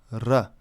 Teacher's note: One notable difference is the rolled r, r, also encountered in modern Frisian, but not in most English dialects